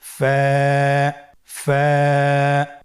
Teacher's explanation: স্ক্রিনে দেখতে পাচ্ছেন ফায়ের মাখরাজ। ফায়ের মাখরাজ হলো নিচের ঠোঁটের প্যাড সামনের উপরের দুই দাঁতের আগার সঙ্গে লাগিয়ে উচ্চারিত হয়।